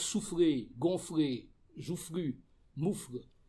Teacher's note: Tout cela implique donc une liquide qui vient après une fricative et ça donne, disons, une sorte de sensation de mouvement.